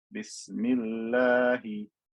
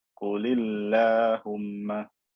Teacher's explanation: This kasra is making the lam and the alif that comes after it skinny.